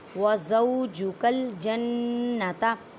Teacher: نون مشدد ہے، گنہ کریں، آواز کو ناک میں لے کے جائیں ایک الف کی مقدار میں